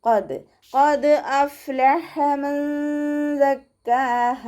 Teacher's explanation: ഹൻ്റെ മഖ്റജ് എവിടെയാണ്? തൊണ്ടയുടെ മധ്യഭാഗം, വസത്തുൽ ഹൽക്ക്, ഹംസയായി പോവാതെ ശ്രദ്ധിക്കുക